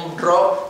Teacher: paso del sonido nasal al no nasal. Un ro. Pero si lo hago muy rápido, no tengo tiempo de coordinarlo exactamente, y entonces me sale de refuerzo una B.